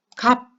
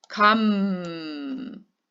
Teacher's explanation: 입은 꽉 다물고 있는데 소리가 계속 공기가 계속 콧구멍으로 빠져나오죠. 그러면서 계속 울리고 있죠.